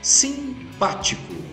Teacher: co é a última sílaba, ti é a penúltima, pá, que é a sílaba forte, é a antes da penúltima, que a gente chama de antepenúltima.